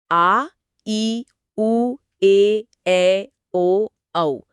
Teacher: इन्हें बोलने में लघु स्वर से दुगना समय लगता है। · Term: दीर्घ या द्वित्रिक स्वर